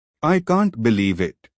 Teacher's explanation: I can't believe it with rise fall intonation it shows excitement or disbelief